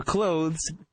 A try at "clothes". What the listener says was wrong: Jesus. No one uses the TH.